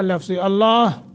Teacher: لفظ اللہ کو منہ بھر کر پڑھیں گے